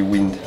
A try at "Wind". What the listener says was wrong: Non, c'est Wind. On prononce pas le D en français.